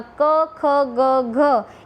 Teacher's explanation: જીભનો પાછળનો ભાગ એ પાછળના તાળવાને અને કંઠને સ્પર્શીને હવા બહાર આવે છે અને એને સ્પર્શે છે અને જે ધ્વનિ અથવા તો જે ધ્વનિ સંકેતોનું ઉચ્ચારણ થાય છે તેને કંઠ્ય વ્યંજનો કહેવામાં આવે છે.